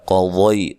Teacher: قاف کو ضاد کو دونوں کو موٹا ادا کرنا ہے اور یہ یا لین ہے.